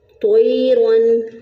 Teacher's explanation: اور تو کو موٹا پڑھیں گے